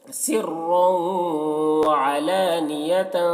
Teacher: سرًا، یہاں پر را کو پر پڑھیں گے کیونکہ رائے مشددہ کے اوپر دو پیش ہے، دو زبر ہے تو را کو پر پڑھیں گے، اور یہاں پر تنوین کے بعد حروف ادغام میں سے واو ہے، حروف یرملون میں سے یا یومن میں سے واو ہے تو تنوین کو واو سے ملا کر غنہ کے ساتھ پڑھیں گے، اس کو ادغام ناقص کہتے ہیں